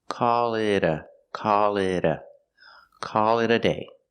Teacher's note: that t in it sounds like a fast D